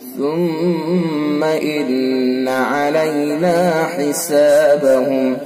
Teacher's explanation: सुम्मा मीम हर्फ मुशद्दद, लिहाजा हर्फ गुन्ना होगा। इन्ना में भी हर्फ गुन्ना होगा, मीम मुशद्दद में भी गुन्ना और नून मुशद्दद में भी गुन्ना, दोनों के अंदर गुन्ना करके पढ़ेंगे।